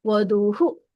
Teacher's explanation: ನೋಡಿ ಅಲ್ಲಿ ಧೂ ದೊಡ್ಡದಿದೆ, ದೀರ್ಘ ಇದೆ, ಊ ದೊಡ್ಡ ಕೂಡಿದೆ, ಆದ್ರೆ ಹೂ ನೋಡಿ ದೊಡ್ಡದಿಲ್ಲ ಅಲ್ಲಿ